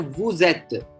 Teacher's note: the sound of S turns to Z when it comes, when the following word starts with a vowel. Here, et starts with a vowel, so it becomes vous êtes.